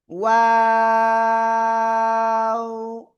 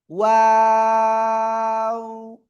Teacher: এই যে দুই ঠোঁট, দুই ঠোঁট শুরুতে গোল হবে, মাঝখানে দুই দিকে প্রসারিত হবে, শেষে আবার গোল হবে।